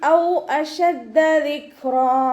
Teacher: വാവ് ഉച്ചരിക്കുന്ന സമയത്ത് ചുണ്ടുകളൊന്ന് സർക്കിൾ ചെയ്ത് പിടിക്കുക. ദാലിന് ശ്രദ്ധ വന്നിട്ടുണ്ട്, 2 അക്ഷരങ്ങൾ ഉച്ചരിക്കുന്ന കനം കൊടുക്കുക കേട്ടോ.